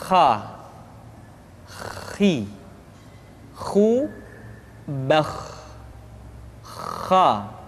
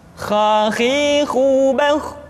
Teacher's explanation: Kha dikeluarkan dari pangkal tenggorokan. Kha, pangkal tenggorokan. Diucapkan dengan mengalir nafas. Atau lebih praktisnya, pengucapan huruf kha persis terdengar seperti orang yang tidur dalam keadaan mengorok.